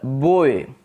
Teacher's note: At the beginning the lips are in rounding position. There is lip rounding at the beginning and then they spread.